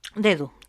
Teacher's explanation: el sonido de la primera de es un sonido oral oclusivo dental y sonoro que se representaría así y el de la segunda d es un sonido oral fricativo interdental y sonoro